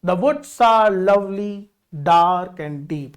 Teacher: in each foot there is unstressed followed by stressed, सो that is iamb